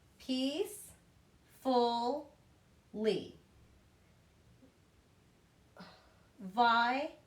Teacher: Okay, if it has 3 syllables and it ends with an ly or a consonant, meaning not a vowel, D, S, consonants, or ER, all right, you have a rule of emphasis as well. You're going to hear the emphasis on the first syllable.